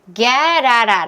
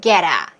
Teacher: 그래서 get out 이렇게 한 게 아니라 get out 이렇게 소리가 나왔죠. T를 중심으로 해서 모음인 경우에는 flap T 처리가 가능해서 리을 소리가 나올 수 있어요. 그래서 get out 편안하게 get out 이렇게 소리를 낼 수 있죠.